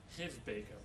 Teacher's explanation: Because the b is voiced. We use our voice for the b. So the preceding sound, the sound before it, also becomes voiced.